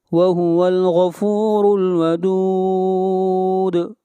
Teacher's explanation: غین کو موٹا پڑھیں گے، غین حروف استعلاء میں سے ہے، اور را کو موٹا پڑھیں گے، اور را کے اوپر پیش ہے، اور دال کے اوپر قلقلہ ہوگا۔